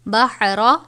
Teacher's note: را کے اوپر زبر ہے، پور پڑھیں گے